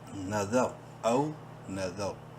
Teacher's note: نون زبر نا، ذال را زبر ذا، را کو منہ بھر کے پڑھیں گے، اگرچہ ساکن ہے لیکن ساکن را سے پہلے ذال کے اوپر زبر ہے،